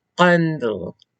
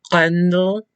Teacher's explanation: So this sound goes like Can you make the sound So is made deep down in your throat. It's almost as though you're making a G sound, but you're cutting it off and only letting part of the sound through.